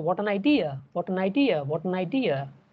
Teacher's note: what will become wa, and t will go with n, so tan, and that n will go with idea.